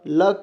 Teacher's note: जीभ का अगला भाग मसूड़िया तालु को छूता है और इसका जो वायु होता है वो जीभ के दोनों किनारों से बाहर निकलता है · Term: पार्श्विक ध्वनि